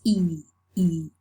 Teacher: So we say it's a close or high vowel. It's front and it's spread. And as for quantity, it's long and tense.